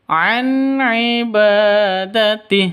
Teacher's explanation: Nun mati bertemu dengan ain jelas terang karena izhar halqi. Nun matinya jelas an ainnya juga jelas an ibadatih seperti itu.